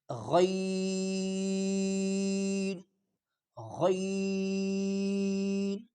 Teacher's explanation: غین موٹا غین گلے پہ زور لگا کے غین، غین اس طرح ادا کرے۔